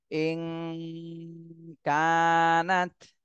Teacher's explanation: নুন সাকিন এর পরে ইকফার হরফ কাফ এসেছে এজন্য এই নুন সাকিনে ইকফা গুন্না করতে হবে